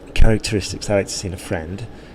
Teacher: we've put a stress on friend there we've reflected the sentence and we've put bit of a stress